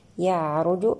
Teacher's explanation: يعرج العين هنا نأتي لها بزمن البينية والراء أيضا مفخمة لأنها مضمومة